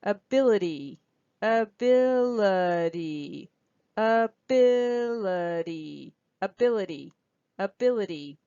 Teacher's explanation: And don't forget the Y, that's also a vowel sound, but it's an E sound, so that's a secondary stress. And listen also how this T goes down to the fast D sound.